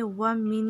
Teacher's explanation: ومن نفس اللہ یہاں پہ ادغام ہے تو ایک نون پڑھا جائے گا، نون ساکن والا جو ہے وہ نہیں پڑھیں گے. ومن میم کو نون میں داخل کریں گے